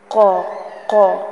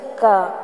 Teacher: قل یہاں پر خیال رکھیے گا قاف آ رہا ہے، کاف نہیں ہے. قاف جو 2 نقطوں والا ہوتا ہے اس کی آواز حلق کے قریب سے آتی ہے، قا قا اندر سے ساؤنڈ آتی ہے، جبکہ جو ڈنڈے والا کاف ہوتا ہے اس کی آواز تھوڑا منہ کے قریب سے آتی ہے